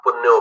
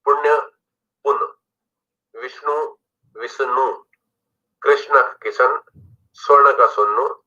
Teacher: ण की जगह न आ गया